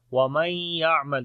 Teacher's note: نون ساکن کے بعد یا آ گیا، ادغام غنے کے ساتھ ہوگا